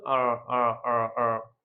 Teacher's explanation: মানে জাস্ট জিহ্বাটা ভেতর থেকে একটু বাঁকা করে উচ্চারণটা করা হয় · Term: আমেরিকান